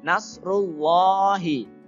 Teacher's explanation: Nah, di situ ada huruf alif lam. Alif lamnya adalah alif lam syamsiyah. Ya, jadi langsung masuk ke huruf setelahnya yaitu huruf lam.